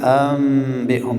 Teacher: نون را قلب میکنیم، تغییرش میتیم به میم، میم را اخفا میکنیم به نزد با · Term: اقلاب